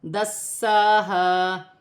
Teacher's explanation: سین مشدد ہے، اسے سیٹی کے ساتھ جماؤں کے ساتھ ادا کیا جائے گا اور کھینچ کر پڑھا جائے گا